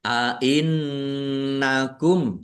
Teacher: nun tasdid dibaca runah atau mendengung ditahan biar tampak mendengungnya.